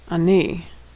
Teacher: Note that the ah sound is not emphasized. Chetaf patach is never stressed.